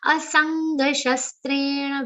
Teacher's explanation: Very nice nasal sound comes on sa because it has an aghat of nga and is followed by half nga and a complete ga sound.